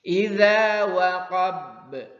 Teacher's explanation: Ada pantulannya, huruf ba-nya ada di akhir kalimat. Berharokat karena diwakafkan, diberhentikan, jadi ba-nya jadi sukun, kemudian memantul suaranya. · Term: qalqalah kubro